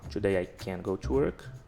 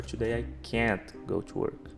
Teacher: nas frases afirmativas, geralmente o can é mais fraco, ele passa mais direto pela frase